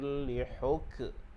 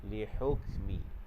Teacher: Huruf kaf ni adalah huruf hams. Okey, mahmus. Jadi bagi dia berangin saja. Lihukmi. Sebab huruf kaf ni makhrajnya di bahagian pangkal lidah.